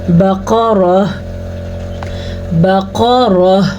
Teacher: قاف کو موٹا پڑھیں گے، قاف ہمیشہ ہی موٹا پڑھا جاتا ہے · را کو پر پڑھیں گے، را کے اوپر زبر ہے